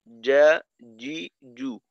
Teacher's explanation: ওই জিম হলো 6 নাম্বার মাখরাজের হরফ, জিহ্বার মধ্যখান তার বরাবর উপরের তালুর সঙ্গে লাগাইয়া জিম